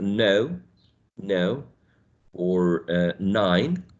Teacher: And we say no or 9 in the initial position. Your tongue is touching the alveolar ridge.